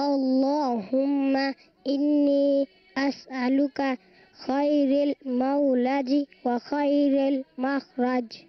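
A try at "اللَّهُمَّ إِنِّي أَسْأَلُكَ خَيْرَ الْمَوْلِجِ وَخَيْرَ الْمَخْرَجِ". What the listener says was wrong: رل نہیں ہے، خیرل. خیرل.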